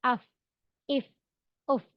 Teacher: ऊपर के दो दांत का किनारा जब नीचे के होठ के अंदरूनी हिस्से यानी इनर ऑफ द लिप्स में में लगे तो तब फा अदा होता है